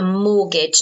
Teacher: Notice you don't pronounce the T.